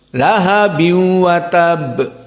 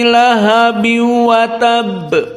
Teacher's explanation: Namun qiraah khalaf an Hamzah tidak dari khaisum. Tidak ada gunnah. Namun idgham saja. Jadi tetap lahabiu sepakat dengan jumhur. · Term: tanpa gunnah